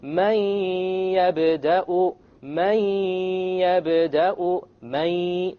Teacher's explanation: It's immediately the mim associates with the ya, and you drop the noon sound. But you have a ghunnah, and that's the nasal sound. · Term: merge